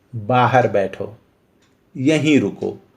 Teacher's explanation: इसमें उच्च या जो आरोही सुर होता है इसका प्रयोग ही नहीं होता